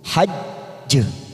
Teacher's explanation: ada huruf jim pada akhir kalimat dan disertai tasdid, namanya qalqalah kubra. Kita pantulkan kuat. Kita masuk dulu hajj, namanya qalqalah kubra, pantulan yang sangat kuat karena mati di akhir kalimat dan disertai tasdid.